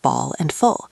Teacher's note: the dark L at the end of words like ball and full